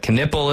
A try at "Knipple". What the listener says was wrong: The K is silent in that one.